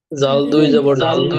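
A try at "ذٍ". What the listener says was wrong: এই যে আপনাদের একটা ভুল, জাল দুই জের, এটা দুই জের উপরে থাকলে দুই জবর হতো। জাল দুই জের জিন, র দুই জের রিন, জা দুই জের জিন, সিন দুই জের সিন।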